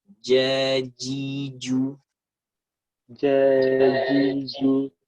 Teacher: Jadi pecah, jadi ada angin. Sementara sifat huruf jim itu nggak boleh ada angin.